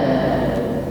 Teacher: Wal ditahan, jangan sampai terpantulkan. Wal tidak boleh, wal ditahan.